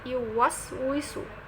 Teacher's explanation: এখানে সিন হচ্ছে হামসের হরফ। অর্থাৎ হালকা বাতাস বের করে পড়তে হবে।